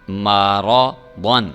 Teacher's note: آحادن، میم زبر ما، را زبر را، مارا، ضاد دو زبر الف ضن، مارا ضن، را کو بھی پر کر کے ضاد کو بھی پر کر کے پڑھنا ہے